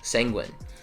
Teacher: The stress, you probably thought the stress was closer to the end of the word, but no, it's it's first syllable stress.